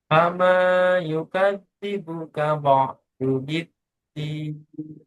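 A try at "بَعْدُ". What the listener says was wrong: masih kurang ainnya ba ba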